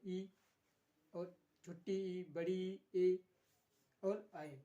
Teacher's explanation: अग्रस्वर के उच्चारण में क्या होता है? जो जीभ होती है उसके आगे भाग का प्रयोग होता है, अग्रभाग का।